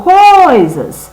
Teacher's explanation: Qual que eu falo mais forte? O coi, não é? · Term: sílaba tônica